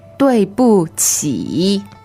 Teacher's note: Third tone. 起 means go down and up.